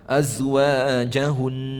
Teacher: kita waqaf atas nun sabdu, pastikan dibaca dengan dengung sebanyak 2 harakat